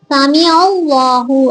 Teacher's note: அல்லாஹ் என்கிற வார்த்தைக்கு முன்னால ஜபரோ பேஷோ இருந்துச்சுன்னா வல்லினமா ஓதணும், வாய் நிரம்ப. அப்போ இந்த இடத்துல நம்ம என்ன செய்யணும், வல்லினமா ஓதணும்.